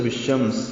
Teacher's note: بالشمس میں الف لام نہیں پڑھا جائے گا شین کی وجہ سے.